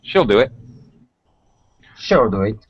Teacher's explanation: You reduce the E sound in she. It actually gets reduced to a nice relaxed shill.